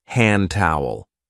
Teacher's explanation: many speakers drop the D sound especially when it occurs between two consonant sounds · also elides the D in hand towel.